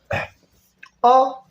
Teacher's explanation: ठीक, और ये ह्रस्व, इसमें बोलने में एक मात्रा का समय लगता है, और ये मध्य, जीभ की मध्य स्थिति से उच्चारण इसका होता है, इसलिए इसको मध्य स्वर कहा जाता है।